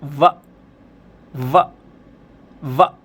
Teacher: जब आप वी को यानी कि व बोलेंगे तब आपके ऊपर के जो दांत होते हैं, अपर टीथ जो होते हैं, वो लोअर लिप्स पे आ जाएंगे। लगा के देखो, ऊपर के दांत नीचे वाले होठ पे रखिए और बोलिए व व व।